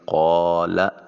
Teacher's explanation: الف خالی از حرکت ما قبل قاف کے اوپر زبر ہے، اس کو ایک الف کے قائم مقام لمبا کریں گے